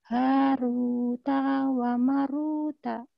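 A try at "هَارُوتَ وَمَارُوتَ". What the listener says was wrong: Taknya pendek. Haruta wa maruta.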